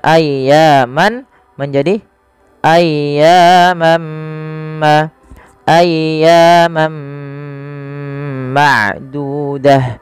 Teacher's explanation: masukkan tanwinnya kepada huruf mim dan diganti bunyinya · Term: idgham